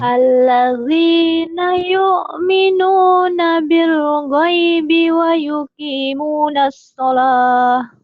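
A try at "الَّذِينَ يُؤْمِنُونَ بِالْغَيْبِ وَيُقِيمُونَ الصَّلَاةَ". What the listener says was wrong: Kok buru-buru di sininya? Jangan buru-buru. Al alladzi alladzina yu'minuna bil ghaibi wa yuqimunas shalah.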